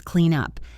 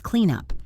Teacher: The end sound at the end of clean slides directly into the use sound of up.